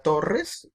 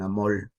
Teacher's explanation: ellos tienden a la sustitución de la R por la L, de modo que en boca de ellos la palabra torres se convierte en toles, o la palabra amor se convierte en amol.